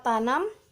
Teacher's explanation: bunyi N hidup, nasal, apikoalveolar